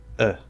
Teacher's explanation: if you're speaking more quickly and or more lazily it's going to tend toward that uh sound the true schwa